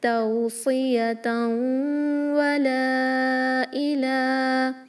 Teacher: تنوین کے بعد واو ہے، ادغام مع الغنہ کریں گے، 2 کاؤنٹ غنہ کریں · توصیتاً ولا الہ، اوکے، یہاں پر جو لام الف ہے، فتحہ کے بعد الف ہے، حروف مد ہے جس کے بعد یہاں حمزہ آیا ہے نیکسٹ ورڈ کے شروع میں، تو یہ مد الجائز منفصل ہے۔ 4 to 5 کاؤنٹ اسٹریچ کریں گے